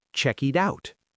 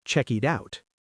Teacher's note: in American English, when a T is between two vowels, it often sounds like a fast D. So check it out sounds like checkied out.